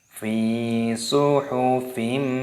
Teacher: Fi suhufim mukarramah. Perhatikan di sini huruf fa-nya dibaca panjang.